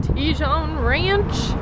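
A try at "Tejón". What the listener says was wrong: Maybe it's not pronounced with the J. Yeah, it could be an 8.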